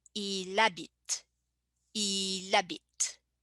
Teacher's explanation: I connect il with habit. So the L is connected with the word habit, and the H, initial H being silent